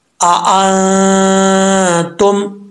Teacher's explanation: नून के ऊपर जज्म है, आगे ता है, नून साकिन के बाद हरूफ इख्फा में से हरफा है, तो यहाँ पे गुना करेंगे एक अलिफ की मकदार